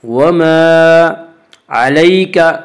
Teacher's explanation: وما علیک، یا لین، یا لین وہ یا جو ساکن ہو اور اس سے پہلے زبر ہو، یا لین کو نرم آواز کے ساتھ پڑھیں گے۔